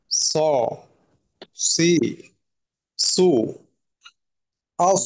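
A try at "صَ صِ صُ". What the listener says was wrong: জি আরেকটু মোটা করা দরকার।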